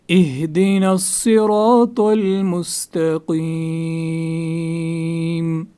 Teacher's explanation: صاد کو پر، اور را کو پر، تو، اس کو بھی پر. مستقیم قاف کو بھی پر. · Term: موٹا پڑھنا